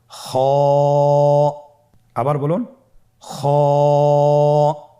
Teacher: খ হরফটির মাখরাজ হলো কন্ঠনালীর শেষ ভাগ হতে উচ্চারণ করতে হয়।